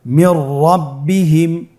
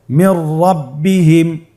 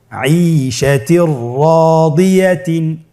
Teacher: নুন সাকিনের পরে যদি র হরফ আসে তাহলে নুন সাকিনকে পরবর্তী হরফের সাথে মিলিয়ে গুন্না ছাড়া পড়তে হবে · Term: ইদগামে বিলা গুন্না